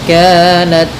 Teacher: dalam ta sedikit dikasih hamas karena sifat ta ketika sukun itu tampak hamasnya